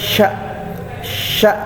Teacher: Ini shin besar, makhrajnya adalah di lidah tengah, maaf ya. Lidah tengah bersentuhan dengan langit-langit atas.